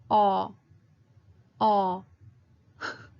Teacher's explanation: so you're not saying oh but it's kind of like a more open oh